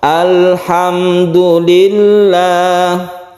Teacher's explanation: sifat lam itu bukan qolqolah jangan jadi jangan dipantulkan · sifat lam itu bukan qalqalah, jadi jangan dipantulkan. Kemudian dia itu juga bersifat tawasud atau tengah-tengah.